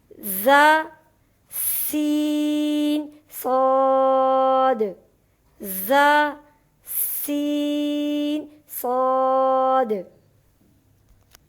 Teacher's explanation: زبان کا کنارہ یعنی طرف لسان جب ثنایا سفلی و علیہ کے اندر والے کنارے سے لگے تو تین حروف ز، سین، صاد ادا ہوتے ہیں۔